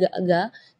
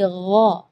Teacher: Jadi kalau ga itu dia makhrajnya dari lidah. Ya, tapi kalau huruf ghain itu dari bagian tenggorokan ya.